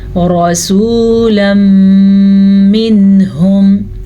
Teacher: را کو پور پڑھ لیجئے گا کیونکہ را پہ زبر ہے